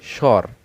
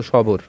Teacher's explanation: দন্ত শয় ব র কী বলছি? স্বর। আমরা বলছি না কিন্তু সবর। তাহলে এই বটা কিন্তু উচ্চারণ হচ্ছে না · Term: অন্তস্থ ব